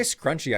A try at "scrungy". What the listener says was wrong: not scrunchy, scrungy with a G. Unless you pronounce it like scrungy, but I don't think that many people pronounce it that way.